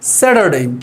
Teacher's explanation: স্যাটারডে অর্থাৎ দেখেন এখানে টি সাউন্ড থাকলেও এটার সামনে এবং পিছনে যেহেতু ভাউলস রয়েছে, আমরা এর আগের ভিডিওতে এটা ব্যাখ্যা করেছি। টি এর সামনে এবং পিছনে দুইটা দিয়ে যদি ভাউলস থাকে তাহলে সেই টি সাউন্ড আর ঠ সাউন্ড না দিয়ে ড সাউন্ড দেয়।